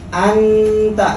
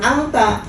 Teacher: nun ini posisinya ada di ujung lidah. Sementara ta dan dal itu berdekatan. Makanya disebut dengan ikhfa dekat. · kalau ikhfa dekat, hukumnya seperti hukum idzhar, lebih jelas tapi didengungkan.